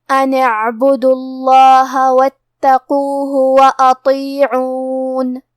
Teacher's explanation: تو ہمیں تا کو 2 حرف کے برابر پڑھنا ہے · کلمت اطیعون یہاں حرف الطو ہے اور طو حروف التفخیم میں سے ہے تو ہم یہ حرف کو بھاری آواز میں اور منہ پھلا کے پڑھیں گے. آخری میں حرف النون پہ رکیں گے تو اس پہ جزم سے رکیں گے، لہذا ہمیں نون کو ظاہر کرنا ہے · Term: تشدید